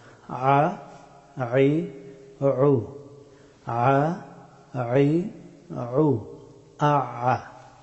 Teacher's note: আইন হরফটি উচ্চারিত হয় গলার মধ্যখান থেকে, এই জায়গা থেকে আইন হরফটি উচ্চারিত হয়।